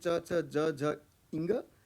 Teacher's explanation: So he uses an adjective for Kantha, and so the second Varga, which comes from Talu, the second Varga is named after Cha, the first of the five sounds produced by stopping or blocking a part of the oral cavity by touching the palate, the top of the mouth, with the front part of the tongue